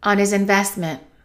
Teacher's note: And let's eliminate the H. On his investment.